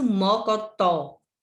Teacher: O tó é a última que você pronuncia com mais intensidade. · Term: sílaba tônica